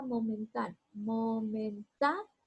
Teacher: Aquí yo elevo la voz en ta, separo estas dos vocales fuertes, cuento 1, 2, 3, me va a decir que es esdrújula y todas las esdrújulas llevan tilde. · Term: sílaba tónica